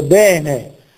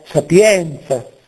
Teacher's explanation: è di quantità breve e quindi di timbro aperto · Timbro aperto vuol dire, per esempio, come in toscano l'avverbio bene, oppure la parola sapienza, in toscano questa è la e aperta.